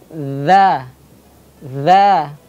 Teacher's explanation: huruf dha ini tipis. Pangkal lidahnya tidak boleh dinaikkan. Pengucapannya dha, dha, terbuka mulutnya, dha, dha, dhi, dhi, dhu, dhu, dhu, adz, adz, adz, idz, idz, udz, udz.